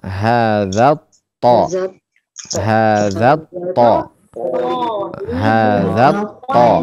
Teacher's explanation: Dan to termasuk huruf tebal ya, maka kita kalau tebal bagaimana? Bagian tengah lidah kita berikan cekungan ke bawah. Ya, ada cekungan ke bawah di tengah-tengah lidah. · Di sini to dia termasuk huruf-huruf syamsiyah. Taib, maka kita leburkan lam sukunnya kepada to.